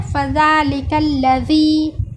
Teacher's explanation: फ़ज़ालिकल्लज़ी में ज़ाल का मखरज जैसे हमने आपको बताया सामने के दो दांतों की किनारे से लगाकर अदा किया गया है।